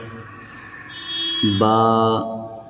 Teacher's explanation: جب دونوں ہونٹوں کے تری والے حصے کو یعنی ہونٹوں کے اندرونی حصے کو ملائیں گے تو وہاں سے ادا ہوگا یہ حرف با